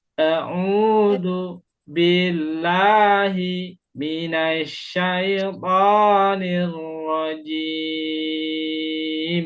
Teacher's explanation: Nah, jimnya empat harakat ya. Di akhir ayat kita mad sukunnya kita baca empat harakat.